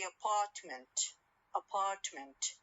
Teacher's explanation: when i for example say apartment apartment i stress the second syllable or the second part of the word whereas when i say